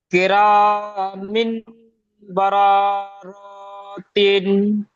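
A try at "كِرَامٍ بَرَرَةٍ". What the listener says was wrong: শোনেন, আপনি সব জায়গায় টান দিচ্ছেন, শুধুমাত্র এক জায়গায় টান হবে আর এক জায়গায় গুণনা হবে।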